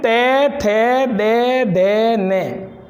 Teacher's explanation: ते बोलते समय जीभ दांतों से स्पर्श कर रही है। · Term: दंत्य वर्ग